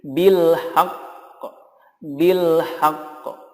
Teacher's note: Ada tekanan dulu haq gitu ya. Kemudian dikolkolahkan.